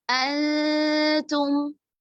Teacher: نون کی آواز کو چھپا رہے ہیں، غنہ کا لحاظ رکھ رہے ہیں، اور آگے آنے والا حرف جو تا ہے جس میں ہم زبان کی نوک کا تھوڑا اوپری حصہ ثناء علیہ کی جڑوں پر لگاتے ہیں تو ادا ہوتا ہے، اس کے قریب لے جا کر اکفا کر رہے ہیں.